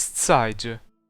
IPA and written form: 't͡s̬æɪ̯.d͡ʒə (Zeidra)